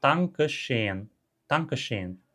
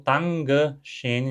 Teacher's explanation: Dankeschön. Sons desvozeados. O T e o K são desvozeados. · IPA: [taŋkə ʃeːn]